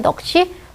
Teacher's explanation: 기역과 시읍 평평한 자음끼리 예사소리끼리 만나니까 한쪽을 강하게 발음하는 거죠. 넋이 이렇게 된 소리 조건이 돼서 넋이 된 소리로 발음되는 거죠.